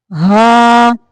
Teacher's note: حلق کا وہ حصہ جو سینے کی طرف ہے وہاں سے یہ ہا نکلتا ہے، اس کو خالص ہا پڑھنا ہے، ہا نہیں کرنا.